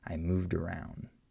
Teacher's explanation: You hear how the D links to the next vowel, right? So that one's a little easier.